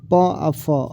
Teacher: प और फ अघोष ध्वनि है